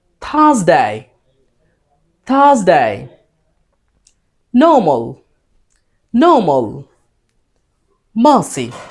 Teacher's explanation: যদি কনসোনেন্ট থাকে তখন আর উচ্চারিত হয় না ব্রিটিশ অ্যাকসেন্টে। যেমন আর এর পরে এস কনসোনেন্ট, আর এর পরে এম কনসোনেন্ট, আর এর পরে সি, অ্যান্ড দেন আর এর পরে এন।